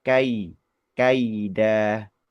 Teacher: dua vokal itu yang berurutan tadi dibaca sempurna dua-duanya. tidak berat sebelah ya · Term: bacaan layin atau diftong